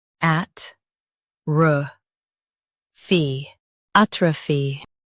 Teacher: Stress at and keep ruh soft. The O is light.